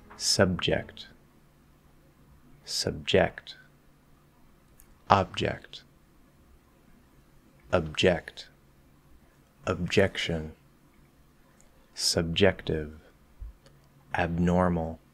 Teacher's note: produce that b we're just going to keep things simple and focus on doing a held b that doesn't have a strong cut off